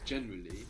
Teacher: we have that kind of heavy initial accent